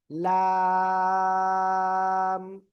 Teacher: জিহ্বার আগার কিনারা, উপরে মাড়ির দাঁতের এপাশ বা এপাশ, দুই পাশে লাগলেও সমস্যা নাই। জিহ্বার আগার কিনারা উপরে মাড়ির দাঁতের গোড়ার সাথে লাগিয়ে চার আলিফটা নিয়ে এই অক্ষরটা উচ্চারিত হয়।